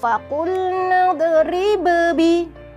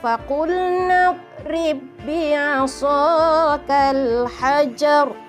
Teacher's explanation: Walaupun ba yang pertama itu bersifat qalqalah, jangan kita qalqalahkan sebab kita terus masukkan pada huruf yang kedua ya · kita baca masukkan ba yang pertama terus kepada yang kedua.